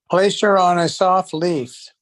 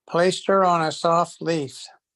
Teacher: cuando encuentran este her, en mitad de oración, botan esa H